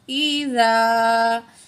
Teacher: زال الف زبر زا 2 الف کے برابر کھینچ کے پڑھیں گے، یا 2 سیکنڈ کھینچ کے پڑھیں گے۔ زیر ای، زال الف زبر زا، ای زا۔